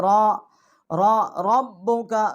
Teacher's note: را جو ہے اس کو ہم موٹا پڑھیں گے، منہ پر کر کے پڑھیں گے